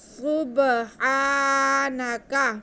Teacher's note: سین سیٹی کی آواز سے پڑھا جائے گا، تو سین پہ پیش ہے، اس کے بعد با ہے، با حروف قلقلہ میں سے ہے، تو حروف قلقلہ جب ساکن ہوتے ہیں تو ان کی آواز کو ہلا کے پڑھا جاتا ہے۔